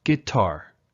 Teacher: the word guitar has two syllables so the falling intonation happens on the final syllable